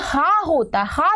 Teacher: हा जो वर्ण है हा उसकी ध्वनि कंठ से होती है उसको हम काकल वर्ण कहते हैं